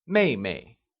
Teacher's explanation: Younger sister translates as 妹妹. It is pronounced using the falling tone.